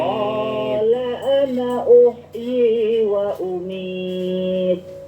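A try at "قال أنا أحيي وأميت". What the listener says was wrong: Nah, seperti itu. Tapi kurang sedikit hentakannya. Wa umit. Siddahnya, sifat siddahnya betul. Karena dia sukun. Jadi huruf sukun itu lebih jelas sifatnya. Wa umit.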